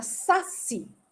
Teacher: É oxítona, a sílaba tônica é a última.